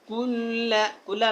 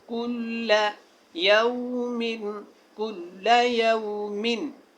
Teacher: کل لام کو لمبا نہ کریں، کل کو تھوڑا جو ہے وہ اس کی مقدار بڑھائیں کیونکہ شد ہے